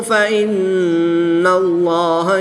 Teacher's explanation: نون مشدد میں غنہ کر کے پڑھیں گے